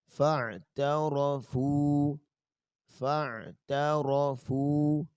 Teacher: فاعترفوا، تعرفوا غلط ہوگا، فاعترفوا، اور فا پیش واو فو ہے، چونکہ فا پیش اس کے بعد واو ہے تو اس کو دو حرکت لمبا کریں گے۔ فاعترفوا، فاعترفوا، تا باریک رہنی چاہیے، تا موٹی نہ ہو۔